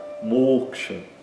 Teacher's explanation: Então, o fechado longo, né, e o a curto no final.